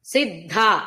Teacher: సిద్ధ అక్కడ ధ లో మహాప్రాణ ధ సిద్ధార్థ అన్నప్పుడు అర్థలో ఉన్నది మహాప్రాణ తకారం విసర్గ సకారం